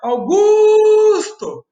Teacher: A gente falou o Au bem rapidinho, o Gusto você esticou e o To foi pequenininho. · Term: sílaba mais forte